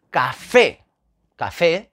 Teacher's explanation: café la sílaba tónica es la última fe